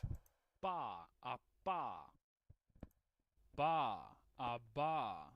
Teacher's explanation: So bilabial plosive, right? Two lips, plosive.